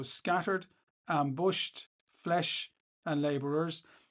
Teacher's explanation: the use of sibilants. That's the repeated S sound.